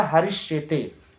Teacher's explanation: हरिश plus शेते, तो हरिश का अंतिम वर्ण क्योंकि हलंत दंत स है और दूसरे शब्द का पहला वर्ण तालव्य श है, तो इस दंत स का परिवर्तन तालव्य स में हो जाएगा, हलंत तालव्य स में होकर यह बन जाएगा हरिश शेते।